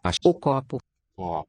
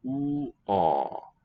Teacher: Where the tonic accent falls on that ko. That's a recognizable O. The other ones sound more like an oo. We say they get raised because of the jaw height.